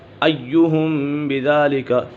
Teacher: ایہم بذالک، یہاں پر اخفاء شفوی ہے۔ میم ساکن کے بعد حرف با جائے تو میم ساکن میں اخفاء شفوی ہوگا، یعنی غنہ کر کے پڑھیں گے، یہاں پر غنہ ہوگا۔